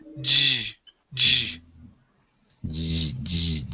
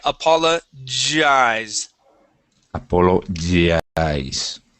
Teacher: That G makes a J sound. Now, the difference with the J is that you'll have the vibration right here in your throat, okay? It's a voiced sound